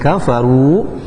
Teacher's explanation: ru-nya dibaca tafkhim tebal dan ru-nya dibaca dua harakat karena termasuk hukum mad tabi'i.